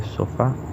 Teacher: donde vemos que el acento recae en la sílaba fa